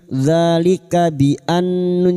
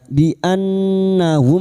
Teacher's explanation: Dzalika, alif kecil di atas 2 harakat kita panjangkan mad tabi'i. Dzalika bi annun yang bertasdid gunnah musyaddadah kita dengungkan selama 3 harakat. Bi annahum, mim sukun bertemu kaf idhar safawi, mim sukun dibaca jelas tanpa mendengung.